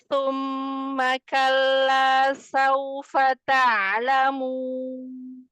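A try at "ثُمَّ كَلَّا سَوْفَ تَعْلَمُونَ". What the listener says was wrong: Nah, itu udah kesin tapi dia nyaris itu nyerempet tapi langsung ingat. Pokoknya jangan ke atas itu ujung lidahnya ya. Saufa. Coba dirasain ujung lidahnya. Kalla sauf. Dia mau nyebut sin tapi dia ujung lidahnya ke atas gitu nggak terhampar.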